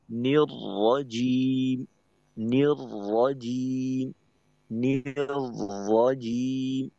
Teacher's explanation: কারণ র, লাম যখন মোটা হয় তখন ইস্তিআলার জন্য যে কাজ করতে হয়, অর্থাৎ জিহ্বার গোড়া উপরের দিকে উঠানোর মাধ্যমে আওয়াজকে মোটা করতে হয়, তো র মোটা হইলে এটা করতে হয়।